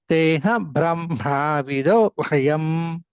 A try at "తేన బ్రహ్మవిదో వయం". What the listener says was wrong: దీర్ఘం లేదు ండి అక్కడ